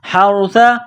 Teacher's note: یہ ح ہے جو گلے کے درمیان سے نکلتی ہے